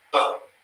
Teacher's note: b and b first one is b it's pronounced boom so it's an explosion of your lips to make the sound